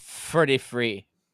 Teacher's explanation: Their th is pronounced with an F.